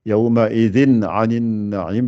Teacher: Tout de suite, j'ai rebondi sur le aïn et je ne fais pas de runna ici. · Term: le izhar